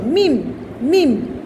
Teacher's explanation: মিম, মিম কীভাবে উচ্চারণ হবে, দুই টুটের, দুই টুটের ভিজা অংশ, মিম মিম, দুই টুটের ভিজা অংশ থেকে মিম উচ্চারিত হবে